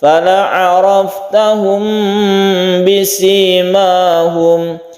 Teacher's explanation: Kita dengungkan apabila bertemu dengan ba, mim bertemu dengan ba, ini namanya ikhfa syafawi.